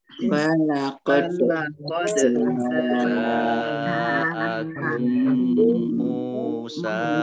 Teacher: Jaa jim fathah alif mat tabi'i, tetapi karena bertemu dengan huruf hamzah dalam satu kata maka menjadi mat wajib muttasil, dibaca panjang 5 harokat. Kemudian mim sukun bertemu dengan huruf mim, idgham mutamasilain atau idgham mimi, ya dibaca mendengung, ya ditahan kurang lebih 2 harokat